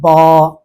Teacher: با کو ادا کرتے ہوئے تو دونوں ہونٹ آپس میں مل رہے ہیں ، لیکن اس کے بعد جو لمبی آواز ہے، یعنی با · ہونٹ آپس میں ملے، یہ تو با کا مخرج ہے، لیکن اس کے بعد جو الف ہے اس کی آواز بس منہ کے اندر کے خالی جگہ سے خود بخود ادا ہو جاتی ہے ۔ تو اس لیے اس کا مخرج بیان کیا جاتا ہے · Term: جوف دہن